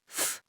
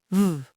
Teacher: The unvoiced F becomes the voiced V.